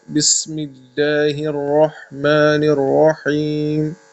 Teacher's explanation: لام کو باریک پڑھنا ہے، ٹھیک ہے، لام کو وہ منہ بھر کے نہیں پڑھنا ہے۔ تو سین میں سیٹی کی آواز